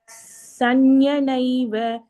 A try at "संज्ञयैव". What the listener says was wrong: नैव இல்லடா, संज्ञयैव.